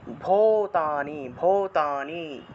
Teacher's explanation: ভয়ের নিচে দীর্ঘ উকার, তাহলে ভো একটু দীর্ঘ টান দিতে হবে